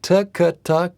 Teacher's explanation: because the tongue flows naturally back and forth between the two the t is pronounced on the front side of the tongue the case pronounced on the back side of the tongue so